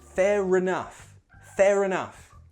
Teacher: Pronunciation, be careful of that end R. Remember, British English has linking R, so that end R sound links into the next word.